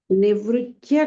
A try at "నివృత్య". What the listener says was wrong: ఆ నివృత్య అంటే ఆ చకారం వినిపిస్తున్నట్టుంది, తకారం వినిపించ నివృత్తియ తియ.